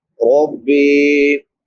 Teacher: را پر پڑھا جائے گا کیونکہ را کے اوپر زبر ہے